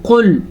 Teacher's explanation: قاف موٹا پڑھیں گے اور لام باریک پڑھیں گے، لام ہمیشہ ہی باریک پڑھا جاتا ہے.